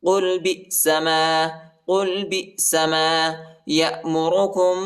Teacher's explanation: میم ساکن کے بعد با آیا ہے، ادھر ہم اخفا کریں گے. یأمرکم بھی ہاں پر کڑی زیر اور چھوٹا مد ہے، اس کو تقریباً 2-3 سیکنڈ تک کھینچیں گے.